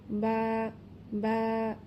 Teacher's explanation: দুই ঠোঁটের ভেজা অংশ থেকে বা উচ্চারিত হবে। আপনি যখন মুখ বন্ধ রাখেন, আপনার মুখ যখন স্বাভাবিক অবস্থায় থাকে, ঠিক স্বাভাবিক অবস্থায় রেখে আপনি উচ্চারণ করবেন বা বা।